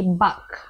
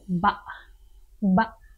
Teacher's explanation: In Malay, when a word ends with the letter K, typically we pronounce it with the glottal stop. So we don't say bak, we say ba.